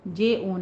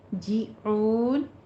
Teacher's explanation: जीम की आवाज़ बारीक रखेंगे और ऊन में मत आरिस वक्फी करना है।